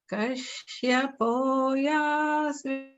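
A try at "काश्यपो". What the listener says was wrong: Just notice that in Kashyapo, the first and third syllables are the lower swaram, but the middle syllables should be the middle. So they're not all down. It goes down, middle, down.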